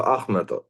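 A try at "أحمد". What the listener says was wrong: and ha, the hanger, and the mouth, ma with the fatha. So it's not me, it's ma. Ahmed, then the dials of the clock.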